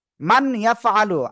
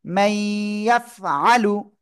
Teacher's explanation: স্পষ্ট আকারে পড়তে হয় না, গুন্নার সাথে মিলিয়ে পড়তে হয়।